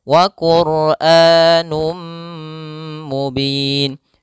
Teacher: P hafal Num kembali ada damatain bertemu mim yaitu idgam bhunah masukkan tanwinnya kepada mim dan ditahan